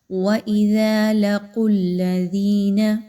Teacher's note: وَإِذَا لَقُوا الَّذِينَ، ایسے نہیں پڑھنا آپ نے، بلکہ قاف کو موٹا کر کے پڑھنا ہے، اپنی زبان کے جڑ کو اوپر کے نرم تالو کے ساتھ ملائیے